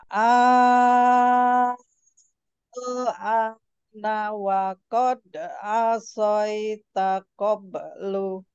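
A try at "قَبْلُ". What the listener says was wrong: Qobel sukunkan. Lu-nya hilangkan. dimatiin Jadi nanti kita juga akan belajar nih sukun dan disukun apa ada huruf sukun dan huruf yang berikutnya harus disukunkan lagi karena wakaf.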